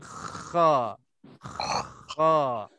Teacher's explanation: Hujung halqum bahagian atas sekali dekat dengan lidah kita, dekat dengan pangkal lidah. Keluar darinya dua huruf gha dengan kha. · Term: huruf kha